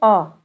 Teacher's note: मुख में जीभ का ना अगला भाग ऊपर उठे और ना पिछला भाग उठे, इसलिए इनको मध्य स्वर कहा जाता